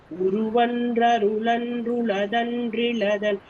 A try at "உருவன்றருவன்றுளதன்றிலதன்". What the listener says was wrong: உருவன்றருவன்றுளதன் அப்படின்னு அருள் அன்று அரு அன்றுதான் அது. அருள்.